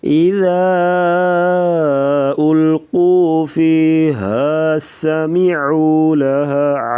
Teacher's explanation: سین سیٹی جیسی آواز نکالیں گے